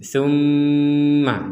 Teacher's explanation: ada mim bertasydid kita mendengungkannya atau kita membacanya dengan dengungan dengungan artinya di rongga hidung kita itu berdengung tumma jadi tidak